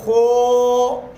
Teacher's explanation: ہونٹوں کو گول کر دیا، تو یہ مجہول ہے، موٹی آواز تو ہوئی مگر مخرج سے اچھی طرح آواز کی صفات برقرار نہیں رہی، خو۔